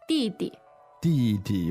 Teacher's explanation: which is d i fourth tone, d i neutral tone, right?